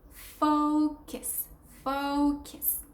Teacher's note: Second syllable is kiss. It's a K and then a schwa sound. So it's not a U sound, it's a schwa sound.